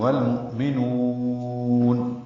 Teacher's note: مؤمنون میں حمزہ ساکن جھٹکے سے اور نون کو لمبا کرنا ہے، نو کے نون کو، اور نون پر اظہار کریں گے آخر میں نون ساکن کرتے ہوئے.